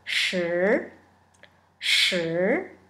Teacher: It's a rising tone, a second tone.